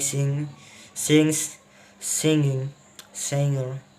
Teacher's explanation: There is usually no K sound in words like sing, sings, singing, singer